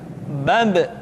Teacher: Ketika mati, maka terdengar suara pantulan.